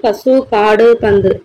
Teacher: ஸோ இந்த மாதிரி ஒலிக்கிறது தான் பார்த்தோம்னா குற்றியலுகரம் அப்படின்னு சொல்லிட்டு சொல்றாங்க அப்படின்றாங்க. ஸோ அது தனக்கான உகரம் தனக்கான 1 மாத்திரையிலிருந்து கம்மியாகி அரை மாத்திரையில ஒலிக்கிறது தான் குற்றியலுகரம்